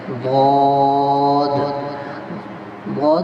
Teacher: زبان کی کروٹ جب اوپر کی 5 داڑوں سے لگے، چاہے آپ دائیں طرف لگائیں چاہے آپ بائیں طرف لگائیں، اس سے ضاد ادا ہوتا ہے۔ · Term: ضاد کا مخرج